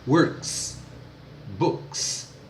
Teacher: Work, o K não é vozeado, então é S. Works, books, é som de S.